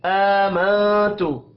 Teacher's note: حمزہ کے اوپر کھڑی زبر ہے، 1 الف کے برابر کھینچ کر پڑھیں گے. نون ساکن کے بعد تا ہے، اخفاء حقیقی ہوگا.